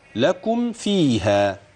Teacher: الميم بتاعت لكم ما فيش فيها غنة.